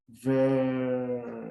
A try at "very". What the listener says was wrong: I needed a little bit more opening in your mouth. It was a little bit very. It's very. It's very.